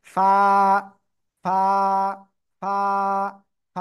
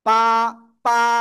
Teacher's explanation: এই যে কোন জায়গা থেকে উচ্চারণ হবে এই অক্ষরটা, নিচের ঠোঁটের পেট উপরে দুই দাঁতের আগার সাথে লাগাবেন, লাগিয়ে হালকা বাতাস বের করে এক লিফটা নিয়ে উচ্চারণ করতে হবে।